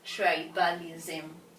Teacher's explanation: we are going to stress the first syllable tribe